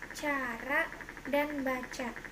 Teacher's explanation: kriterianya bunyi lamina palatal paduan tak bersuara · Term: konsonan C